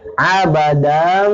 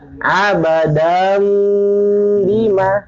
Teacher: Abadam, dam dipanjangin. Abadam, bima nggak langsung masuk ke dam. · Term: isba